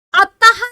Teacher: विसर्ग का उच्चारण करते समय जो है हा की जो है ध्वनि आती है